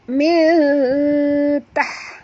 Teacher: Okey, nun mati bertemu ta sama macam tadi, ikhfa haqiqi ya. Kena sembunyikan bunyi nun ke dalam ta disertai dengung 2 harakat